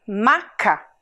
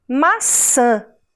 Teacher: o dedo no seu nariz você vai sentir uma vibração maçã esse som que parece que sai pelo nariz porque é o ar que sai por ali é um som nasal